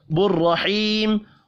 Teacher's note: بالرحیم، را کو پر پڑھیں گے، یا مدہ کو 1 الف کے برابر کھینچ کر پڑھنا ہے، وقف کی صورت میں میم ساکن پڑھا جائے گا۔